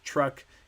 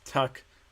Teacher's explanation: they're omitting the r because it's hard to put all those different consonants together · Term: omissions